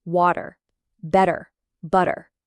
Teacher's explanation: Change the T to a quick D sound when it's between two vowels. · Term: flap T